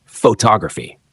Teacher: But add an ending and it moves. Photography shifts the stress to the second syllable